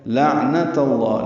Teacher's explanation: لام باریک عین ساکن پہ اظہار ہے، نون کو جلدی پڑھیں گے، تا کی زبر کو وجہ سے لام اس میں جرالہ پر پڑھیں گے، لعنت اللہ، اور 2 حرکات لمبا بھی کریں گے۔